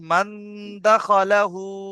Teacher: ইকফার, ইক, হরফে ইকফার 15টি অক্ষরের মধ্যে দাল এসেছে, তাই দালকে একালিক তাই পরিমাণ নুন গুণনা করে সাকিনের লাকে আওয়াজকে, টেনে, তাই নুন সাকিনের আওয়াজকে। তাই নুন সাকিনের আওয়াজকে নাকে তুলে একালিক একালিক পরিমাণ গুণনা করে করতে হয় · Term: ইখফা